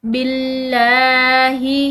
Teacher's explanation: لفظ اللہ کی لام باریک پڑھیں گے کیونکہ اس سے پیچھے والے حرف پر زیر ہے